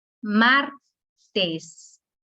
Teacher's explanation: la sílaba tónica es mar